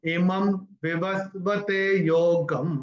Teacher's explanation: अगर अनुस्वार के बाद व आया तो व का उच्चारण म होगा।